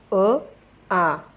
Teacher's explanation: अ आ यांचा उच्चार स्थान जिभेवर मध्य आहे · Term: सवर्ण